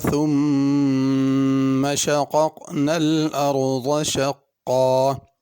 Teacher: ثم کی میم پہ غنہ کرنا ہے